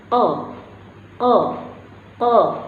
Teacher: Ya, huruf qaf ini keluar dari pangkal lidah. Ya, pangkal lidah bagian belakang berjumpa dengan langit-langit bagian belakang